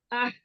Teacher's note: वस्तुल हलक से। हलक के दरमियानी हिस्से से निकालेंगे इसको और साथ सांस भी जारी करते हैं।